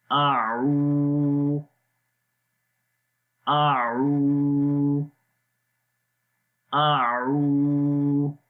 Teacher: عین کی آواز گلے کے درمیان والے حصے سے اور لمبا بھی کریں گے.